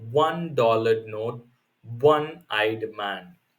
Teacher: though it starts with a vowel letter but the sound is not a vowel rather it is from the consonant sound w